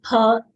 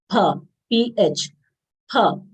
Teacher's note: This is a labial sound. We should not say fa, as in English we say pronunciation of F letter.